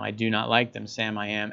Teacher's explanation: everybody knows to stress the do in that even though it's not underlined it's just built in · You know exactly what the timing is because of the syllables and the rhyme, and you know exactly how to say, you know, I do not like them, Sam, I am. Everybody knows to stress the do in that, even though it's not underlined.